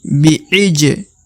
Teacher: huruf ja berharokat sukun atau mati. Maka dibaca pantul. Bi'ij. Ya, harus dipantulkan ya.